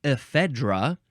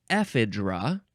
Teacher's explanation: you can emphasize either the first or the second syllable